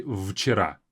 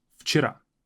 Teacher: We say вчера, as if it's an F sound.